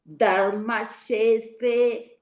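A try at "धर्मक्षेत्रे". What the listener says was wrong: Dharma kshetre kshe ka and short together. So you practice how to recite ka and sha together. Ksha. Ka and sha together. Ksha. Kshe.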